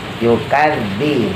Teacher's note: Ara'aital ladzi yukadzibu biddin. Yukadzi, daknya dikeluarin lidahnya, ditempelin ke gigi atas ya.